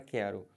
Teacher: Perceberam que quando eu faço a transcrição fonética, esse QU, o U não tem som? Então acaba que eu fico com duas letras e um som só. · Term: dígrafo